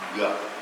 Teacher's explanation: പിന്നെ അത് voiced syllable ആവുമ്പോൾ, അതായത് വോക്കൽ കോഴ്സിനെ ക്ലോസ് കോണ്ടാക്റ്റിലേക്ക് കൊണ്ടുവരികയും എയർ പാസ് ചെയ്യുമ്പോൾ അത് വൈബ്രേറ്റ് ചെയ്യുകയും ചെയ്യുമ്പോൾ അത് വോയിസ്ഡ് സിലബിൾ ഗ എന്നായി മാറുന്നു